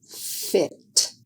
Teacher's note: air is blocked by the upper front teeth in light contact with the lower lip. F is an unvoiced sound, just air.